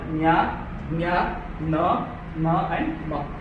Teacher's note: This last part is known as Anunasika, because these words are pronounced using your nose.